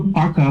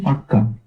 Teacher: একটা ক ধ্বনিটাকে আমরা ডবল উচ্চারণ করছি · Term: বর্ণদীপ্ত